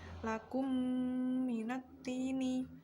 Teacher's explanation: Bisa juga disebut dengan idgham mimi karena mim sukun bertemu dengan mim dengan memasukkan mim pertama ke mim yang kedua sehingga keduanya menjadi mim bertasydid